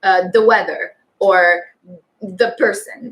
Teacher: it's not quite a TH, it's really more of a D sound